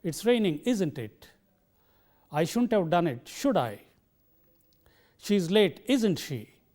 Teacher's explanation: the speaker should cultivate the habit of using a falling tone on question tags